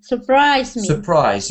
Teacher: don't stress the beginning. So you want to stress the ending.